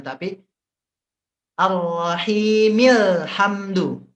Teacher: hamzahnya Tidak Dianggap ya Jadi tidak difathahkan tidak di bukannya seperti ini Rahimi alhamdu tidak ya tidak tidak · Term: Hamzah wasal